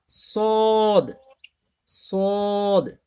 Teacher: ভেতরটা ফাঁকা করে, হ্যাঁ, মোটা করে বলতে হবে